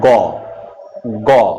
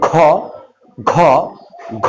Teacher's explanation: তুমি বলো গ, গ, বাতাস কম বেরিয়েছে। যদি বলো ঘ, ঘ, ঘ, বাতাস বেশি বের হচ্ছে। তাহলে এই ঘ উচ্চারণে বাতাস বেশি বের হচ্ছে। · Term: মহাপ্রাণ